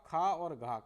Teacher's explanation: इन व्यंजनों के उच्चारण में ह का जैसी ध्वनि विशेष रूप से निकलती है तथा स्वास भी निकलती है और समय लगता है जिसके कारण इन्हें महाप्राण कहा जाता है